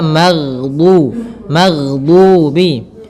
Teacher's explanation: ada mad thabi'i berupa dhammah bertemu dengan huruf wau. Maka ini kita panjangkan dua harakat.